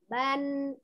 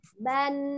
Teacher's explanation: ada nunnya tuh, ujung lidahnya tuh nyentuh di atas